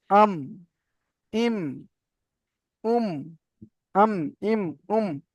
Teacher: দুই ঠোঁটের শুকনো অংশ মিলিত হয়ে মিম উচ্চারিত হয়, যেমন আম, ইম, উম, আম, ইম, উম। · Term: মিমের মাখরাজ